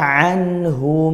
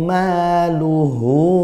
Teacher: Karena sebelumnya huruf mati nun sukun. Sedangkan pada luhu, hu-nya dibaca panjang karena sebelumnya huruf hidup, setelahnya huruf hidup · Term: matsilah qasirah